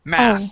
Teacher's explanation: This is going to be an unvoiced TH at the end